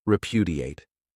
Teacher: This verb has 4 syllables, and the stress is on that second syllable